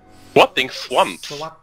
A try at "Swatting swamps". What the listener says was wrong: That's swamps. It sounds like you're saying swans. Schwanz. It sounds like you're saying schwanz.